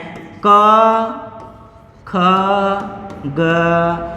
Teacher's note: कंठ से उच्चारित होने वाले वर्ण है